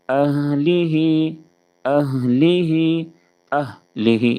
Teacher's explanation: اہلی، حمزہ کو جب ہا سے ملائیں گے تو ہا کی ادائیگی نہایت نرمی کے ساتھ کریں گے، اور ہا کی ادائیگی میں آواز جاری رہے گی۔ اہلی، اہلی، اہلی، اس طرح سے آواز کو روک کر نہیں پڑھیں گے۔